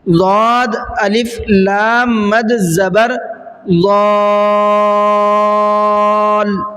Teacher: میں نے ہجے کرتے ہوئے ضال لام کی آواز کو صاف نکالا ہے